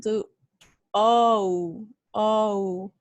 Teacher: lips tense and very rounded because of the o at the beginning and then the jaw is going to rise with the tone and closest slightly so first it it rises · the lips are going to be rounded, but at the end they are a little bit slightly parted, or they are a little bit spread, okay? So we're gonna see, or we're gonna feel some tension when we produce this sound. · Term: lone oh, lone O